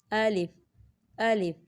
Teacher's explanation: یہ منہ کے خالی حصے سے ادا ہوتا ہے، اس میں زبان کا استعمال بالکل نہیں ہوتا۔ آپ کی زبان کہیں بھی ٹچ نہیں ہوگی، صرف یہ منہ کے خالی حصے سے ادا ہوگا۔